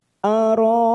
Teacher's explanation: Ro ada mat yang bertemu dengan hamzah dalam satu kalimat, mat wajib mutasil, 4 harokat kita panjangkan